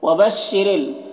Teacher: रा के नीचे ज़ेर, रा को बारीक पढ़ेंगे।